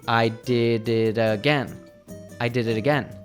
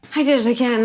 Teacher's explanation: When we have a T between 2 vowel sounds, we usually pronounce it as a D sound. So we hear it again, and all the words flow together.